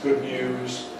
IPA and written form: ˈgʊd ˈnjuːz (good news)